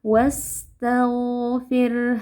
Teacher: Nah, huruf gin juga memiliki sifat rakhawah, tapi sifat lainnya adalah jahar. Jadi, pada saat membaca huruf ghain yang sukun, kita alirkan suara tapi tidak ada aliran nafas. Tag tidak boleh diqqalqalahkan.